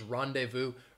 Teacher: you do not hear that z sound uh when somebody says rendezvous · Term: silent z